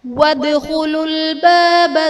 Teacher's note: وادخلوا الباب میں دال حرف قلقلہ ساکن ہے تو یہاں پر قلقلہ خوب ظاہر کریں گے